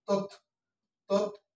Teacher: থটা হচ্ছে মহাপ্রাণ এজন্য তার আগে কি আছে অল্পপ্রাণ